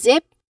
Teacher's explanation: You feel the buzz right from the start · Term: buzzing sound